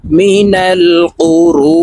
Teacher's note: কফ পেশ কু, র ওয়াও পেশ রু, পেশের বাম পাশে জজমওয়ালা ওয়াও মদের হরফ, তো এই র ওয়ার সাথে এক আলিফ টেনে পড়ব। মিনাল কুরু, নুন জের নি, মিনাল কুরুনি।